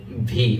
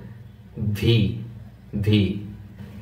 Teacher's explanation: সামনের উপরের দাঁত ঠোঁটের উপরে আনতে হবে, ভি।